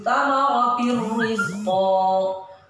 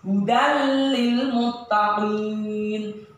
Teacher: ketika ada tanwin bertemu ro, ini langsung dimasukkan ke ro caranya, tapi tidak didengungkan. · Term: idgham bila gunnah